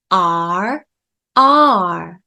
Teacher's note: 목구멍 가까이 뚱뚱하게 누우면서 혀 양옆이 입천장에 붙습니다